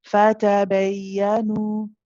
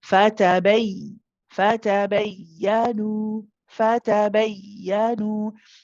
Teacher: What we want to be doing is emphasizing the joining between the ba and the ya. · You raise your voice this way when you say bay, and you quicken. Bay, fatabayanu, fatabayanu. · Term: emphasize